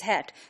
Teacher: in Nigerian pronunciation heart and hat both are pronounced as hat so you know heart would also be pronounced as hat instead